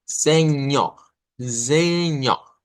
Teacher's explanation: Vamos a poner zen, miren, zen, así, zen, y luego vamos a decir ñoj, miren, señor. Nótese que no es solo señor, sino que debemos de hacer la nasalización de la E